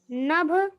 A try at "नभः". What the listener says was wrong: विसर्ग भी है। नभ नहीं होगा।